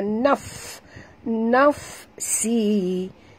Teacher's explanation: Tak boleh dengung. Nafsi, huruf fa sini mati kena bunyikan hamasnya, naf, nafsi, si mak tabi'i.